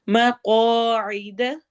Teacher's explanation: قاف کو موٹا کرنا ہے اور الف مدہ کے ساتھ